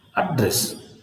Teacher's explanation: So here you have the stress on the first syllable